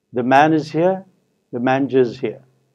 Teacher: in native English, we are told that this timing of the two sentences is roughly the same. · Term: stress-timed